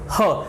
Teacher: जैसे आप ह का उच्चारण करेंगे, ह, तो आपने देखा कि आपकी जीभ जो है मुंह के किसी भी भाग को स्पर्श नहीं कर रही है। ह के उच्चारण करते समय आपकी जीभ मुख के किसी भी भाग को स्पर्श नहीं कर रही है। · जो ह है वो किस प्रकार की ध्वनि है, तो वो स्वर यंत्र की ध्वनि है